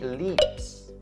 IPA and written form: lips (leaps)